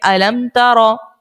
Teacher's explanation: یہاں پر لگائیں گے اظہار شفوی کا قاعدہ، اور غنہ یہاں پر ہم نہیں کریں گے. علم ترا، سمپل پڑھیں گے علم ترا.